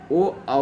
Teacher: कंठोष्य वर्ण, जिन वर्णों के उच्चारण में वायु कंठ और ओठ दोनों को छू के निकलती है, उसे कंठोष्य वर्ण कहते हैं। ओ औ जो है ये कंठोष्य वर्ण है।